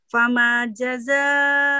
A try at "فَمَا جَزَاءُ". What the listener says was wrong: Fama, bukan fama, tafkhim. Bukan tafkhim. Tarqiq dibis. Fama, fama. Lahja Indonesia tafkhim. Lahja Indonesia tafkhim. فما لهجة العربية ترقيق فما